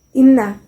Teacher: Nun bertasydid dan membacanya dengan dengung serta ditahan tiga harokat yang kedua Mad Jaiz munfasil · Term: guna, gunnah